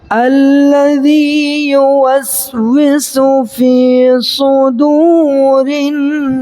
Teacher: نون الف زبر نا کو ہم 4 سیکنڈ تک لمبا کر سکتے ہیں، کھینچ سکتے ہیں، کیوں؟ اس لیے کہ مد عارض للسکون وقفی ہوگا، یعنی کہ سین پر جو ساکن دے رہے ہیں تو یہ عارضی طور پر ساکن دے رہے ہیں، اصل میں تو یہاں سین کے نیچے زیر ہے، ٹھیک ہے، اس وجہ سے ہم یہاں پر 4 سیکنڈ تک کھینچ سکتے ہیں۔